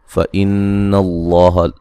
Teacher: نون مشدد پہ غنہ ضروری ہے. لفظ اللہ کو موٹا ادا کریں گے، پہلے زبر ہے، مد اصلی ہے.